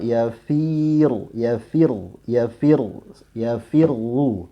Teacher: Bukan berarti firnya tipis, runya tebal. Yang tipis itu adalah kasrohnya fi. Namun ketika kena huruf ro pada tasydidnya langsung ya kondisi mulut kita normal kembali ya agar dia tebal